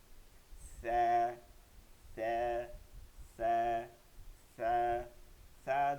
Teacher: জিহ্বার আঘাত সামনে উপর দুই দাঁতের আগার সঙ্গে লাগাইয়া কোন শব্দ আসবে না নরম আওয়াজে বাতাস বের হয়ে আসবে দাঁত আর জিহ্বার ফাঁক থেকে